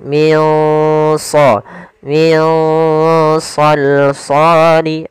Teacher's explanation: Cara membacanya adalah kita samarkan nunnya ke huruf shad. Nah, shad termasuk huruf yang tebal dan huruf isti'la, maka dia samarkannya agak ditebalkan. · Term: ikhfa